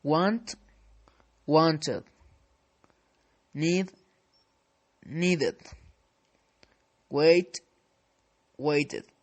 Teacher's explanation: if verb ends with sound of d or t, the ending ed is pronounced like one strong syllable